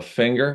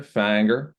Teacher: the ing, when followed by something else, becomes almost an ang.